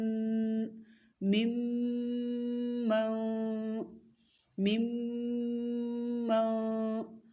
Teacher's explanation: پھر ہے ممن، میم میم زیر میم، دونوں میموں کو ملائیں گے، ٹھیک ہے؟ اور میم مشدد ہے، غنہ کریں گے، میم میم زیر میم، میم نون زبر من، مم من، مم من۔